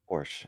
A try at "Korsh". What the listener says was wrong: Korsh with a K. Korsh there.